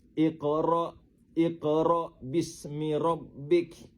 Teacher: Tengok huruf qaf tu dibaca dipantulkan bunyinya dengan pantulan yang kecil dan halus. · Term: qalqalah sugro